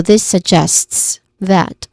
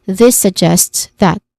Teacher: The stressed syllable is jests, or the second syllable.